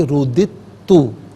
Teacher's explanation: بعد تا ہے، تو آواز اس طرح نکالی جائے گی، رُدِدتُ، دال کی آواز بھی ہوگی اور تا کا بھی تھوڑی سی آواز ہوگی